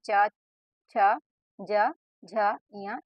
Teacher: बाद है तालव्य व्यंजन तालव्य व्यंजन आप सभी को पता होगा इस प्रकार का व्यंजन जिसका उच्चारण के लिए जीभ के पिछले भाग को तालू से संघर्ष कराते हैं